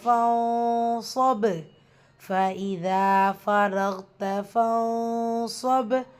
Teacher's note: நூன் சுக்குனுக்கு அப்புறமா சுவாத் இஹ்ஃபா நூனை பாதியாக மறைச்சு குண்ணா செய்யணும். வசனத்துடைய முடிவில் பா சுக்குன்.